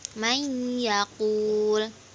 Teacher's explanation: Contohnya yaitu nun sukun bertemu ya, may yaqul. Nah, cara membacanya yaitu ditahan kemudian disamarkan seperti gunnah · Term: idgham bi gunnah